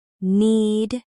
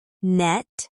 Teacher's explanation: in the word need, the vowel sound is longer than in the word net. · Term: vowel length